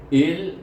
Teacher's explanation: dia hamzah digabungkan dengan lam yang bertasydid, bunyinya il. Kemudian lam di sini bertemu dengan alif lam samsiah.